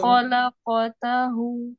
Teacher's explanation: Lamnya tipis tapi kofnya kayak kurang kurang tebal ya.